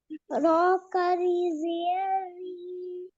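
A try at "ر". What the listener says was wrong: Shabash.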